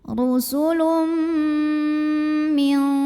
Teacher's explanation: Karena ada tanwin dhammah yang bertemu dengan huruf mim. Maka tanwin dhammah ini lebur atau masuk ke mim ya. Disertai dengan bunyi dengungan. Jadi bunyi M-nya tahan. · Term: idgham bi gunnah